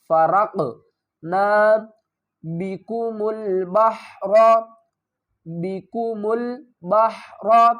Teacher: وَإِذْ فَرَقْنَا، فرقنا، را کو بھی پر پڑھیں گے، قاف کو بھی پر پڑھیں گے، اور قاف ساکن ہے تو یہاں پر قلقلہ کریں گے